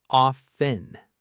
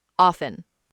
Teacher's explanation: >> The correct pronunciation is often. The T is completely silent.